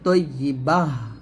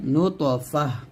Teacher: আর ওয়াকফ অবস্থায় এই তাটাকে হা সাকিন ধরে পড়তে হয়, তাটা হা হয়ে যায়, তখন তা থাকে না